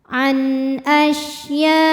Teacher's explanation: Huruf shin punya sifat yang khas namanya tafashi. Tafashi artinya menyebarkan angin di dalam mulut kita.